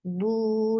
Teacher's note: circle your lips very nicely and make it 2 counts long